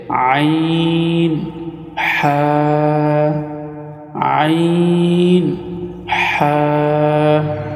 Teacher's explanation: হলকের মধ্যখান হইতে দুইটি হরফ উচ্চারিত হয়